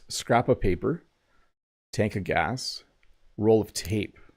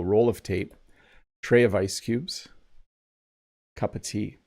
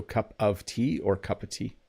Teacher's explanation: sometimes when I speak quickly I use ah as the pronunciation for of